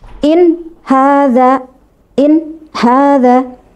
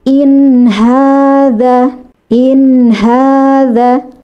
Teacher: Yang benar tunaikan makhraj nun sehingga ada suara aliran. Karena nun ini bersifat selain bersifat ghunah juga bersifat bahiniah atau tawassut.